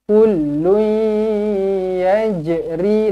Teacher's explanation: Dengungkan dua harakat idgham al-gunnah. Masuk dekat huruf ya.